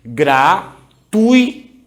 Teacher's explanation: O U é uma vogal, o I é uma semivogal. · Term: ditongo decrescente